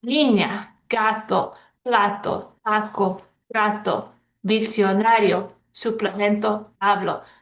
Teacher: So all of those end in a vowel, and on all of those, we stress the second to last syllable.